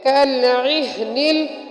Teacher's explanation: ہا حلق کے آخری حصے سے جو سینے کی طرف ہے وہاں سے ادا ہوتی ہے · عین حروف حلقی میں سے ہے جو حلق کے بیچ سے ادا ہوتی ہے